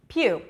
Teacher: Pew is the primary stress. So it's going to be longer and higher in pitch.